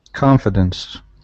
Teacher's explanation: Stress at the beginning of the word.